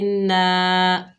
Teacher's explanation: نون کے اوپر زبر، آگے الف خالی ہے، یہ الف مدہ ہے، ایک الف کی مقدار کھینچ کر پڑھیں گے